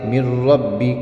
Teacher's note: نون ختم ہو گیا بالکل، اس لیے کہ ادغام تام کے اندر ہم نے پڑھا ہے کہ پہلا حرف جو ہوتا ہے وہ پہلا حرف دوسرے حرف سے بالکل بدل جاتا ہے